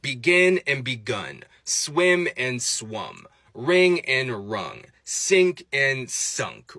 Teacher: an e or an i becomes an uh